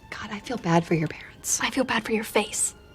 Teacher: four is reduced to fur because it's unstressed so it sounds like Bad Fur your reduces to your because it's unstressed as well so it · feel is pronounced with a dark L at the end of the syllable · the D in bad since it's followed by another consonant basically it's unreleased the tongue does not release from its position or contact with